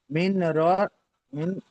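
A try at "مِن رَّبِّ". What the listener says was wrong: এখানে এখানে নুনটা উচ্চারণে আনতে হবে না। মিম র জের মির, র যাবার র, মির র। জি না, ডাইরেক্ট তাজদিদওয়ালা অক্ষরের সঙ্গে জুড়তে হবে, নুন সাকিন এখানে ধরতে হবে না। রজের মির, র যাবার র, মির র।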